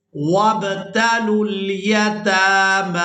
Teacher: تا کو اور میم کو کھڑی زبر کی وجہ سے کھینچ کر ادا کیا جائے گا